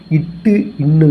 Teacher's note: நாவின் நுனி அண்ணத்தில் நுனியை தொடுவதால் தோன்றும்